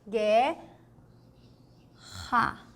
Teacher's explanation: esse R é aqui na garganta lembra é o r forte